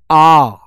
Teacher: विवृत स्वर के उच्चारण में मुख द्वार पूरा खुलता है